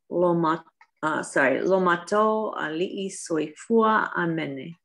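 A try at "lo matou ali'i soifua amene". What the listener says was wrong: Amene. So I'm hearing the emphasis on the O instead of the A. It's supposed to be, instead of mato, it's supposed to be mato.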